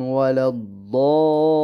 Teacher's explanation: یہ مد لازم کی قسم ہے، 6 الفی مد ہے